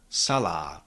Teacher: The second and last syllable contains a long vowel but we cannot shift the stress from the first syllable to the second one